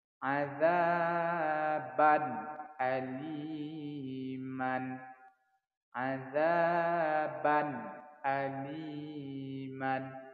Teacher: ban ini dibaca harus jelas tanpa ada dengung. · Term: izhar halqi